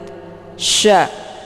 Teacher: Sya ini dia sifatnya tafasi jadi makna tafasi itu menyebarkan angin keluar dari mulut